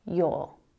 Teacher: in my accent you don't really hear that er sound at the end it's just the vowel